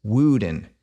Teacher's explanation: the Great Vowel Shift kicks in raising o to U and we end up with a modern form pronounced wuden